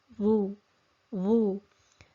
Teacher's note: And for the dhamma, dhu. So we're at the articulation point of the dha and we circle the lips because it's carrying a dhamma